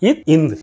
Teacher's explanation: இத் இந்த் ஆகிய இரு மெய்களும் மேல்வாய்ப்பல்லின் அடியை நாக்கின் நுனி பொருந்துவதால் பிறக்கின்றன.